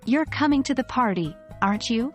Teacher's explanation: interesting the way you say a tag question changes its meaning if you expect the answer to be yes you use a falling intonation your voice goes down